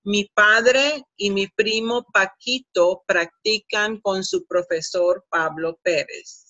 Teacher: I don't produce the P as explosive as it should be in English